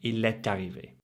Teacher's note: you make that liaison with the T and the A to make it arrivé.